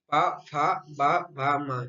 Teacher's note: इन 5 वर्णों का हम उच्चारण ओष्ठ के द्वारा करते हैं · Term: पवर्ग